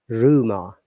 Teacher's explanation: Look at rumor, R is pronounced because it's at the beginning, and the last R is not pronounced because it's after a vowel sound.